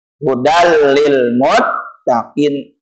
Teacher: cara membacanya hudal lil muttaqin bila gunnah dengan tanpa dengung